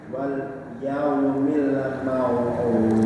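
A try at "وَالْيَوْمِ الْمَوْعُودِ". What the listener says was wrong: Ya, walnya masih sakta, milnya nawalud ya. Emang sulitnya huruf yang mati itu begitu. Kalau nggak hati-hati, terutama lam, mim itu.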